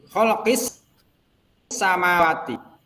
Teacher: Maka dibaca idgham syamsiyah atau asyamsiyah. Nah, cara bacanya itu dimasukkan kepada huruf sin, ditasydidkan